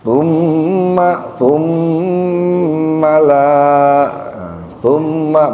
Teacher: mim tasyid ya ditahan ada gunah